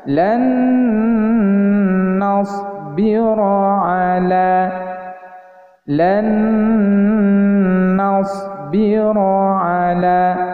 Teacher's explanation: nun mati bertemu dengan huruf nun, maka cara membacanya ditahan dan disertakan dengan bunyi berdengung